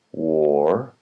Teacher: The R is silent in British English.